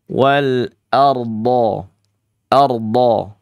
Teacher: Dnya sifatnya istidalah. Dia terhampar meluas ardho menutupi langit-langit mulut secara sempurna